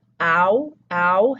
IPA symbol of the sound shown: aʊ